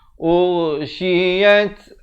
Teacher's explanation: Ghain makhrajnya di hujung kerongkong. Urshiyat, ada bunyi hamasnya, bunyi angin di situ.